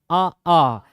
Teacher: तो अ और आ जो है अंदर से आता है कंठ से